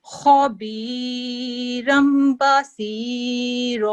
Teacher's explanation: तो खा जो है, खा को हम खा नहीं पढ़ते, खौ पढ़ते हैं, ठीक है, ठीक है, तफखीम से पढ़ा जाता है, मोटा पढ़ा जाता है